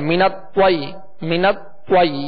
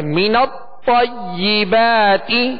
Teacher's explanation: تو کو ادا کرتے ہوئے ہونٹوں کو گول نہیں کریں گے، اس طرح نہیں بنیں گے منت طوی منت طوی، یہ ہونٹ گول ہو رہے ہیں. بغیر ہونٹوں کو گول کیے اس کی زبر جب ادا کریں گے تو آواز اور منہ کھول کر ادا کریں گے